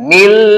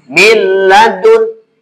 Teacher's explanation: Tuh, nun mati menghadapi lam. Nunnya dianggap hilang, masuk ke lam. Cuma jangan ditahan. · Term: idgham bila gunnah